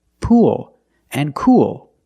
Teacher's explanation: You have the long oo sound followed by the dark L.